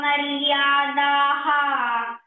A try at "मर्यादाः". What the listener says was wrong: मर्यादाः नो विसर्ग is not there मै dear